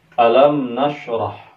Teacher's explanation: Idhar maknanya adalah jelas, dinisbatkan kepada bacaan mim sukun harus terbaca jelas atau harus dibaca zahir ya. Agar bacaan mim sukun kita menjadi idhar adalah dengan cara kita tidak memberikan dengung, dan yang kedua adalah dengan mengatupkan kedua bibir kita · cara membaca idhar syafawi itu adalah mimnya tidak boleh diberikan dengung.